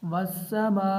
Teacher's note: یہ مد متصل ہے، اس کی مقدار 4 الف کے برابر ہے، یعنی اس کو ہم 4 الف کے برابر لمبا کر کے پڑھیں گے